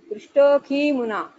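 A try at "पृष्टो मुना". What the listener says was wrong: No Prishtohi and all. Prishto muna, that's all. That S kind of thing in between just shows that there was an akara there before the sandhi, but there's nothing. Prishto muna. It's as simple as that. Prishto muna.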